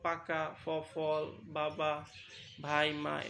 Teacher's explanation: মুখের কোথায় বাধা পায় বাতাসটা ঠোঁটেতে ঠোঁটেতে বাধা পায় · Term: উষ্ঠ ব্যঞ্জন